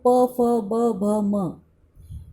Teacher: इनका उच्चारण दोनों होठों से किया जाता है, इसलिए इन्हें ओष्ठ्य श्रेणी में रखा जाता है।